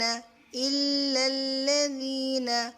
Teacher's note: حمزہ کو لام کے ساتھ ملا کر لام کو ہیوی نہیں کریں گے، دونوں لام کو